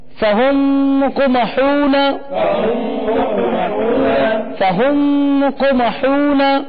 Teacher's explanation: یہاں میم ساکن کے بعد دوسری میم آ رہی ہے تو یہاں ادغام شفوی ہوگا